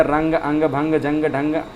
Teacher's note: अनुस्वार की ध्वनि कहाँ से निकलती है सर, नाक से निकलती है।